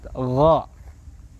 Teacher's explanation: Pangkal lidah naik ke langit-langit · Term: isti'la